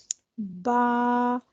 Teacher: In English, ba is pronounced from the wet part of both the lips. با دونوں ہونٹوں کے تر حصے کے ملنے سے ادا ہوتا ہے.